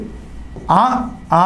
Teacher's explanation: అ ఆ అనేవి కంఠ్యాలు అంటే కంఠం నుంచి పడతాయి